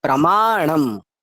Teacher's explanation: আর ণটা জিহ্বা গোল হবে, একটু তালুতে মারবে টোকা, দিয়ে হবে ণ।